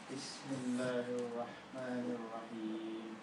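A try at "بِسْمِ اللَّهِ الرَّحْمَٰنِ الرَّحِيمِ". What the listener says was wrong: Can you hear it's a bit of a thuther? Can you say seen? Seen. No, don't try to not let your tongue touch anywhere near your teeth. Don't let them get in there, yeah? I will not even move my tongue. I'll just move my teeth.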